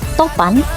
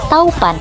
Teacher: Dan yang terakhir ada kata topan menjadi taupan, di mana bunyi o menjadi bunyi au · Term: diftonisasi